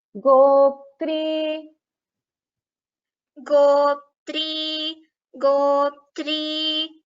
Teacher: Goptri. So all three letters should be heard. Pa, Tha, R.